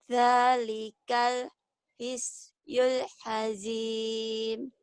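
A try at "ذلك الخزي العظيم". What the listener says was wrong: Bukan ngazim ya, azim. Zalikal khizyul azim.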